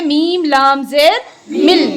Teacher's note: बीच में जो नून है उसकी आवाज़ नहीं आएगी। इसी को कहते हैं इदगामे बिला गुन्ना। · कोई गुन्ना नहीं हो रहा है, गुन्ना कहते हैं नाक में आवाज़ ले जाने को